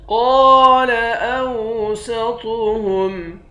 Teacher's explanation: قاف کو موٹا پڑھیں گے، ایک الف کے مقدار کھینچ کر پڑھیں گے، الف حروف مدہ ہے۔